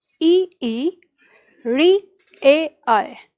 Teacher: जिन स्वरों के उच्चारण में जीभ का अगला भाग काम करता है, उन्हें अग्र स्वर कहते हैं